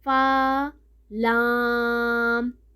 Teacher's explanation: فا جو ہے وہ 1 الف کے برابر پڑھا جائے گا اور لام جو ہے 3 الف کے برابر دراز کر کے پڑھنا ہے